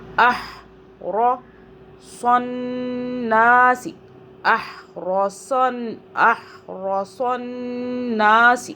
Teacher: صاد کو موٹا پڑھیں، ہا کو حلق سے پڑھیں